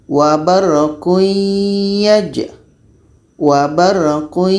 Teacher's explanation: Tanwin bertemu ya hukumnya idgham bi gunnah, tapi secara proses bacanya ini bunyi tanwin masuk kepada ya. Jadi ya ini membawa bunyi dengung daripada tanwin. Maka di sini disebut dengan idgham nakish.